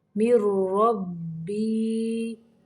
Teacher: من نہیں بننا، میم کو را کے اندر ملانا ہے